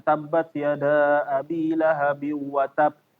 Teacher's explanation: ketika mengucapkan huruf ba itu tambahan angin